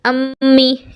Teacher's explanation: मीम, दोनों होंठों के खुश्क हिस्से से। अब मीम के लिए आप अम्मी कहिए, अम्मी।